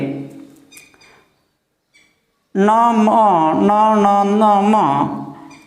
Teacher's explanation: उसके बाद देखिए न म न न न म, तो यह है अनुनासिक, अनुनासिक। यानी इनका जो ध्वनि उच्चारण होगा वह नाक से होगा, यानी अनुनासिक, मुख और नाक से अनुनासिक